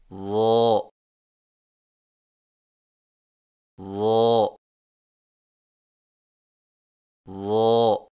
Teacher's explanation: زبان کی نوک کو سامنے والے اوپر کے دو دانتوں کے اندرونی کناروں سے نرمی سے لگا کر اور زبان کے پچھلے حصے کو تالو کی طرف بلند کرتے ہوئے موٹی آواز میں پڑھیں، یعنی ظا ظا ظا۔